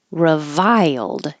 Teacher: when you go high for the I revile then you slide down and make it it'll make an accidental Y